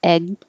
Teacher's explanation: you don't release the g your tongue goes up for the g